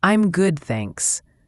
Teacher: the D in good is often very light, and thanks again has that TH sound and a clear S at the end.